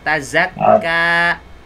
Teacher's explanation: wag mong lagyan ng shadda yung za sa tazakka